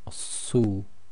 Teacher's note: the tafkeem version is nice and round mouth, su, putting pressure of the tongue up on the roof of the mouth. Again, it's emphatic.